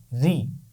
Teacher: را کی آواز زیر کے ساتھ باریک ہوگی. اس کو ہم روئی نہیں پڑھیں گے بلکہ اس کو بالکل باریک پڑھیں گے